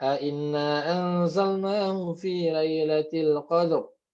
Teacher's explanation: Ro yang terakhir itu dia itu roam namanya. Ya, biasanya cuma sedikit terdengarnya.